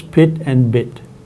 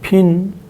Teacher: the vowel in pit and bit is an oral e vowel and the vowel in pin is a nasal e vowel